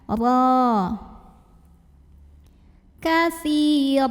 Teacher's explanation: Bacanya tebal, pangkal lidah naikkan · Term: tafkhim